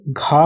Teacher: इसमें महाप्राण, इसमें एयर ज़्यादा निकलेगी और बोलने के लिए हमको एफर्ट ज़्यादा करना पड़ेगा।